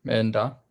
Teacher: because da is a palatal, it makes an N sound between them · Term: prenasal